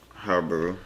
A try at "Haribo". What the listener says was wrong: Harbor. It's the I in there. So I would say Haribo. Haribo.